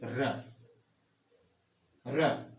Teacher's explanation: र का भी उच्चारण स्थान मूर्धा है